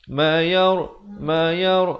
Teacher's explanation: ra di sini dibaca tebal